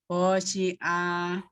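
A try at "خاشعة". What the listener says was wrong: Pendek semua. Khosyi'ah. Khosyi'ah. Pendek ya. Oh, tidak khosyi'ah. Tidak. Kho-nya tidak naik. Tidak. Khosyi'ah.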